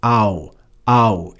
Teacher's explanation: you can see it's just those two vowel sounds combined in a single syllable